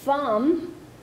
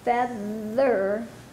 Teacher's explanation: we have both thumb which is voiceless and feather which is voiced for the th